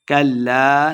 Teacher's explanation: لام مشدد ہے، کاف کو لام کے ساتھ ملا کے پڑھنا ہے